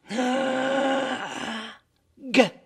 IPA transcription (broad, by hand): g